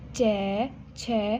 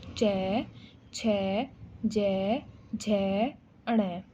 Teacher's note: जीभ तालु में लग रही है